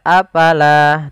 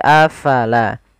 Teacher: Fa harus alirkan nafasnya